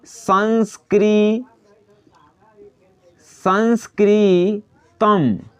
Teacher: संस्कृतम, तम में जो है हाई म हम काहे लगाए हैं? काहे कि म सिर्फ लेना है, अ नहीं लेना है हमको। म में यहाँ पे हलंत हम इसलिए लगाए हैं काहे कि म में संस्कृतम, तम सिर्फ म, इसका मतलब होता है कि हम दर्शा रहे हैं कि म जो है विस्वर स्वर वर्ण से अलग है, सिर्फ व्यंजन वर्ण है, यानी कि हलंत।